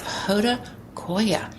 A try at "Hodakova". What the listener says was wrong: That is a V. You keep saying why. Hodakova.